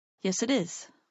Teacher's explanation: So those 3 words, yes, it is, can sound like one word.